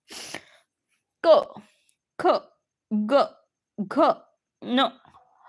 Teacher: पडजिभेज जवळील जागा आहे तिला कंठाचा भाग म्हणतात तिथून हा उच्चार होतो म्हणून याला म्हणायचं कंठ वर्ण